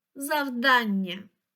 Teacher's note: наголос на другий склад